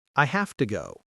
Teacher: It takes too much energy for the mouth. So to becomes a very short sound, t, or sometimes just a t sound.